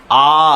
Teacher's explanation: जिह्वा प्रयत्न या मुखाकृति या तालु की स्थिति के आधार पर ये अब आपकी क्या है, ये मुख है, ये मुंह बनाया हुआ है। अगर मुंह जो है खुला हुआ है, आ, पूरा मुंह खुला, आ, तो ये पूरा मुंह खुला, तो विवृत कहते हैं